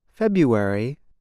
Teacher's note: the month February is said like this February the R is not pronounced instead speakers make a yuck sound now you try it use